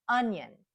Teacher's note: the first syllable is stressed so that's where we hear the short u